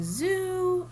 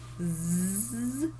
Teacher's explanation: it's voiced you can feel that vibration in there right